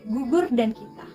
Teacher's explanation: Konsonan ini dihasilkan oleh belakang lidah yang berfungsi sebagai artikulator dan langit-langit lembut yang berfungsi sebagai artikulasi. Bunyi yang dihasilkan yaitu K, G, X, dan N. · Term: konsonan velar